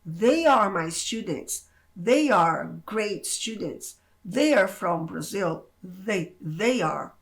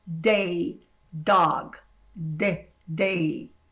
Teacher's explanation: Então, observe como que dia, ela não tem essa vibração, ele é um D seco, igual dog, day